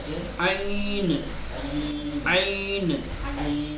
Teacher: حرف عین گلے کے اور حلق کے درمیانی حصے سے نرمی کے ساتھ ادا کیا جائے گا. نہ بہت زیادہ نرمی کی جائے گی اور نہ ہی پرحجم بنایا جائے گا.